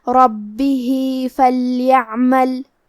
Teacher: لقاء، کلمت ربہ کے آخری میں ہا کے نیچے کھڑی زیر ہے تو یہاں حکم ہے مد صلہ صغرا، ہم اپنی آواز 2 مد کے برابر لمبی کریں گے · کلمت فلیعمل میں لام ساکن ہے لہذا ہمیں لام کو ظاہر کرنا ہے